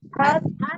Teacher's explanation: hatta Nah, di situ ada hatta, tak tasdid bertanya ada dua ya, taknya sifatnya siddah. Nah, tidak dialirkan suaranya ya, suara tertahan karena kuatnya huruf di huruf ta